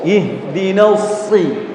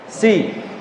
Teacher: ujung lidahnya ya bertemu dengan ujung gigi seri bagian bawah, pangkal lidahnya naik ke langit-langit. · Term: isti'la